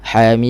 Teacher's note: Asal dia gunnah asliyah, gunnah naqisah, rasa di hidung. Mim, sikit je, jangan terlebih.